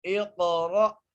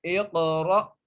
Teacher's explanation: قاف کو موٹا کر کے پڑھنا ہے اور قاف پر قلقلہ کرنا ہے، اور اس کے بعد را ہے، را کو موٹا کر کے پڑھیں گے، را کے ساتھ حمزہ ہے، را کو حمزہ سے ملانا ہے کیونکہ حمزہ کے اوپر جو سائن ہے وہ جزم ہے، اس لیے ہم را کو حمزہ سے ملاتے ہوئے جھٹکا دیں گے۔